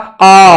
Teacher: जिसका उच्चारण करने में मुख का अग्रभाग और पश्च भाग दोनों खुल रहे हैं , अर्थात कोई सा भी किसी से भी नहीं मिल रहा,